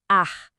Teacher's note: A língua dá uma enroladinha para trás na boca. Em vez de falar R, como a gente faz, o som é ar.